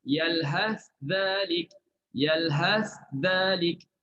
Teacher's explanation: Kalau izhar, letak lidah pada huruf sa dulu, yalhas. Betul-betul di situ, betul-betul di makhraj sa, baru sebut dhalik.